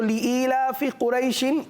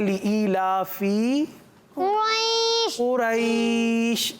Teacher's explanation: जो आपने लंबा किया कुरैश, ये गोया कि क्या बन गई? ये बन गई मद। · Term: मद्दे लीन आरिस